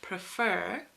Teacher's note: this so for example in a word like prefer which is a two-syllable word with the stress on the second syllable